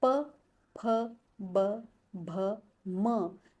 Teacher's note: यानी हमारे होठ टच कर रहे हैं, इसलिए इसका उच्चारण स्थान यानी प वर्ग का उच्चारण स्थान है ओष्ठ्य।